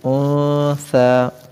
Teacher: قالت رب انی وضعتها انثى، قالت نقطے والے قاف، اس کو موٹی آواز میں یعنی پر کر کے پڑھیں گے. انثى، یہاں پر ثا کو جو ہے سین جیسی سیٹی جیسی آواز نہیں نکالیں گے بغیر سیٹی کے